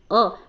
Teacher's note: अ बोल के देखेंगे तो इसकी जो ध्वनि है वो कंठ से होती है